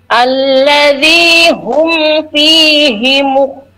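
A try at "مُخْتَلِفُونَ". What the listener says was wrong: Nah, hati-hati huruf kha-nya, kha sukunnya alirkan dikit ya, kurang alir. Ya, mukhtalifu.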